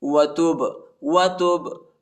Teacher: تا با پیش تب، با کو جو ہے با کے اوپر جو ہے قلقلہ کریں گے، یعنی جھٹکے کے ساتھ با کو پڑھیں گے